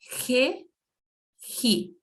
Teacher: Esse re, ri, é como aquele R raspado no fundo da garganta, assim, que é pronunciado em alguns lugares na região sul do Brasil, por exemplo, e em outras partes também.